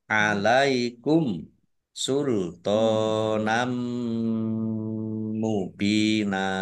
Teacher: mim tasdid juga dibaca mendengung atau ghunah ditahan biar tampak dengungannya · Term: gunnah